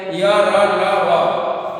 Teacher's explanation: जिन व्यंजनों का उच्चारण करते समय जीभ विशेष सक्रिय नहीं होता, उन्हें अंतस्थ व्यंजन कहते हैं।